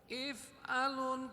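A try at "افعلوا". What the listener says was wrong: If'alu, nggak pakai nun.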